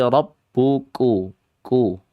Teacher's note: Dibacanya dalam keadaan 1 syiddah, kuat. 2 hams, samar. Ya. 3 istifal, yaitu dengan keadaan turun lidahnya, istifal, lidahnya turun.